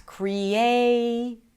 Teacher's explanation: in the word creation, the A is the primary stress. Creation. The primary stress is the longest syllable of them all.